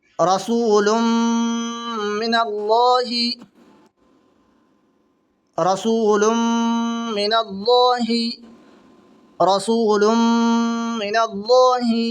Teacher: دو پیش کی تنوین کے بعد میں میم آ رہی ہے، تو یہاں پر ملا کر کے گنہ کے ساتھ پڑھیں گے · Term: ادغام ناقص